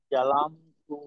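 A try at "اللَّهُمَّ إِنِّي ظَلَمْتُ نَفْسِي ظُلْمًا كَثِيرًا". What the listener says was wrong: আচ্ছা, এখানে এই ওয়ের উচ্চারণটা তো আর কি জালের মতো হয়ে গেল। ওয়ালাম তো, জি আপনার জালাম তো হয়ে গেছিল। ওয়ালাম তো, জি।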